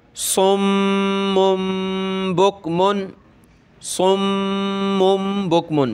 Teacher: میم پر ہم نے تشدید کرنی ہے، غنہ کرنا ہے، یعنی ناک میں آواز چھپانی ہے ، صاد کو موٹا کریں گے سیٹی کی آواز کے ساتھ، · یعنی تنوین ہوتی ہے، تو وہاں چھوٹی میم دے دیتے ہیں، تو ہم نے میم کے ساتھ میم ملانی ہے، اس کے بعد با پڑھنا ہوتا ہے ، ٹھیک ہے، اور میم پر ہم نے تشدید کرنی ہے،